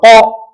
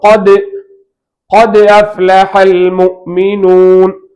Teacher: இஸ்திலா தஃஹீமுக்கு தகுதியான எழுத்து. இது முழுமையாக வாய் நிரம்ப சொல்லணும்.